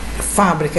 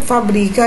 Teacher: Observe que a sílaba tônica muda de lugar aí então é a fábrica é uma proparoxítona e fabrica é uma paroxítona